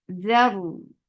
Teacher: Makhraj of dhal is touching the tip of your tongue to the edge of your frontal two teeth. So it should be soft.